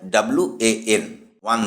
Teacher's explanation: যেমন, I saw an ওয়ান eyed man, মানে আমি একচোখো একজন মানুষকে দেখেছিলাম। বাক্যটিতে ওয়ান শব্দটি ও দিয়ে শুরু হলেও উচ্চারিত হয় WAN, ওয়ান দিয়ে, ওন নয়।